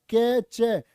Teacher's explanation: चे होता आपका तालव्य, तालु से बोला जाएगा